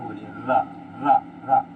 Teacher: जब लुंठित व्यंजन बोलेंगे तो जीभ से रा बोलिए, रा रा रा, गाड़ी चलाते हैं तो वही वाला रा है। उसमें क्या जीभ कंपन करती है, यानी जीभ जो वाइब्रेट होती है बहुत तेजी से।